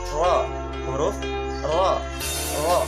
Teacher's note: Lenturan ujung lidah condong ke punggung lidah atau inhiraf. Satu kali getaran halus ujung lidah atau takrir.